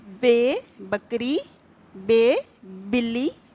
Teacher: فرق صرف اتنا ہے کہ بے کے لیے ہونٹوں کو ایک دوسرے سے ملا کر فوراً الگ کیا جاتا ہے، لیکن اس حرف بے کے لیے دونوں ہونٹوں کو تھوڑا سا دبا کر ہوا کو اندر کی طرف کھینچا جاتا ہے